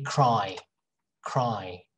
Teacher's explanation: when you say cry you hear ah very clearly and a little bit of e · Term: diphthong